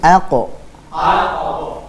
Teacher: ketika sukun dia akan dipantulkan atau Qalqalah